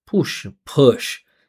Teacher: if you notice, my vowel sound is more neutral. I'm not saying ooh. Ooh. I'm saying uh uh it's it's it's it's not quite fully neutral, but it's very neutral.